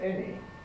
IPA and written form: ˈeni (any)